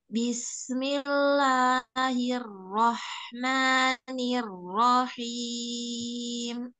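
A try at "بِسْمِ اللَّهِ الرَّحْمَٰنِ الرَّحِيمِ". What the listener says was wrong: Ya, untuk kasrahnya luruskan lagi bismi. Bismillahi.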